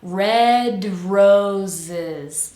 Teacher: Red, we release and then jump right into Red roses. Make sure both of these S's are pronounced like a Z, vibrating sound. Roses. It's not roses, but roses.